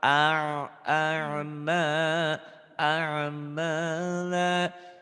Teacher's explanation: Bukan akmala tapi kayak keselak.